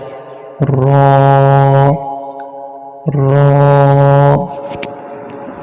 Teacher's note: জিহ্বার আগার পিঠ তারা বরাবর উপরের তালুর সঙ্গে লাগাইয়া উচ্চারিত হয়